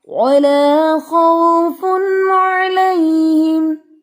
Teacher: خو ہیوی ہے، خاؤ نہیں پڑھنا، خاؤ نہیں، ہونٹوں کو پھیلا کے نہیں، خو زبان کی روٹ اٹھانی ہے